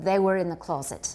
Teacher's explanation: the next word starts with a vowel and there's an R at the end of the preceding word we have linking